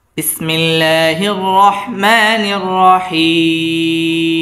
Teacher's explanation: হিম, হি জেরের বাম পাশে জজমওয়ালা ইয়া, এটা হচ্ছে মদের হরফ। আর মদের হরফের বামের হরফে ওয়াকফ আসছে, তাই আমরা এখানে 3 আলিফ টেনে পড়ব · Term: মদ্দে আরজি